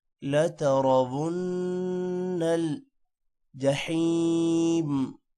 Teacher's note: را موٹا ہوگا اور نون پر غنہ ہوگا